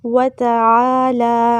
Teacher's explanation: پھر وتعالی، عین وسطی حلق سے ادا کریں گے، ایک الف کے برابر لمبا کرنا ہے، پھر لام پہ کھڑا زبر ہے، اسے بھی ایک الف کے برابر لمبا کریں گے